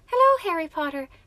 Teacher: And then if I'm here, all I have to do is relax my throat a little bit so I'm not pinching it and go slightly higher, up and down, with a light Irish accent